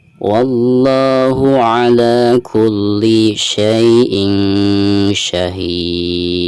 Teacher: ujung suaranya itu ada pantulan huruf dal, karena huruf dal ini termasuk huruf qalqalah.